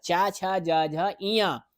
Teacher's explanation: च वर्ग च छ ज झ ञ और य और तालव्य सा इनका उच्चारण स्थान क्या है? तालु है